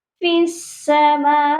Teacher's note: یا کو سین مشدد کے ساتھ ملانا ہے اور درمیان میں یا کو نہیں پڑھنا۔ یہاں پر اکثر مسٹیک یہ ہو جاتی ہے، ہم فی کو لمبا کر دیتے ہیں، تو یہاں پر یا جو ہے خالی حرف ہے، الف خالی ہے، لام خالی ہے، یہ تینوں حروف ایکسٹرا ہیں، ان کو ہم نہیں پڑھیں گے۔